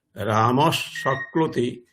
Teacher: এখানে বিসর্গটি সকারের রূপ ধারণ করবে, ফলে রামস শক্লোতি এরকম উচ্চারণ হবে